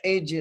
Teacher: ہا کو جیم سے ملانا ہے، جیم پر قلقلہ کرنا ہے